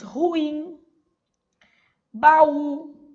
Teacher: A última sílaba é tônica. Pode ser sem acento ou com acento, desde que a última sílaba seja a sílaba tônica. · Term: oxítonas